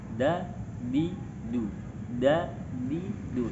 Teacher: Ketika kita melafalkan huruf dal ini, tidak banyak nafas yang keluar dan suaranya cenderung jelas. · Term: jahar